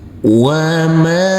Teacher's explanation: huruf mim kita baca panjang dengan panjang 2 harokat. Karena huruf mim ini, huruf mim yang berfathah A bertemu dengan huruf alif yang tidak berharokat.